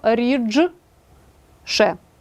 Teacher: слово рідше шиплячий ш впливає на д